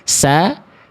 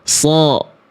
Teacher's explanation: Tuh, tarqiq kalau huruf yang tipis bedanya ya dari tadi, dari pangkal lidahnya. Sin itu tipis, istifal dia, terhampar pangkal lidah.